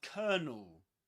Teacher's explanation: in British English, before a consonant sound, you don't pronounce the letter R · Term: Southern Standard British English